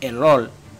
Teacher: Al escuchar español del Caribe vas a sentir que a veces se reemplaza una r por una l Este es el caso de palabras como error que se pronuncian